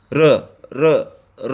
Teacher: r, that is voiced post alveolar frictionless continuant